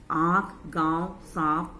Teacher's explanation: हवा नाक और मुख दोनों से निकलती है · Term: अनुनासिक